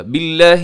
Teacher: لفظ اللہ کے لام سے پہلے با کے نیچے زیر ہے، یہاں پہ آپ لفظ اللہ کو باریک پڑھیے گا